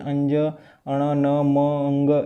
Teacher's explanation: એ બોલવા માટે નાકમાંથી હવા નીકળવી જરૂરી છે। તે આ અનુનાસિક કહેવાય।